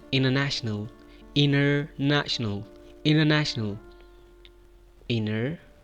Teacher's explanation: Make the link of N sound to R, international.